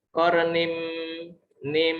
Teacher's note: Idgham artinya melebur ya. Nin melebur ke mim. Jadi nim idgham bi gunah ya. Idgham dengan gunah, dengan dengung ya.